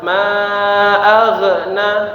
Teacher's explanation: Ma dipanjangkan lima harakat kemudian huruf ghain itu mengalir ya. Ma agna ana tidak terputus.